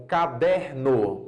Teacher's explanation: Se você pegar uma palavra como caderno, por exemplo, você vê que a penúltima sílaba ela tem uma pronúncia mais forte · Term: paroxítonas